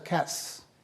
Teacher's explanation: cats there's a hissing sound but there's no voicing so that's not a z sound it's an s sound